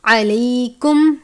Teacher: عین کو بھی باریک ہا کی طرح حلق سے ادا کرتے ہیں، الف کی طرح نہیں پڑھنا